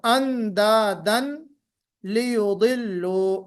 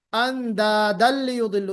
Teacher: दाल के ऊपर तनवीन है, और उसके बाद क्या आ रहा है, लाम, लाम लाम आ रहा है। तो हमने क्या किया, उसको तनवीन को मर्ज कर दिया लाम में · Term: तनवीन मर्ज